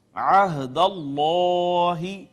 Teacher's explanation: عین بھی عین وسط حلق سے ادا ہوتی ہے